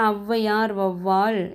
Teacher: அவுகாரத்துக்குரிய மாத்திரை அளவு 2 மாத்திரை அளவு. ஸோ இதில் ஔவையார், வௌவால் என சொற்கள் வந்து முதலில் வரும்போது தனக்குரிய 2 மாத்திரையிலேருந்து 1.5 மாத்திரை அளவாக ஒலிக்குது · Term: அவுகார குறுக்கம்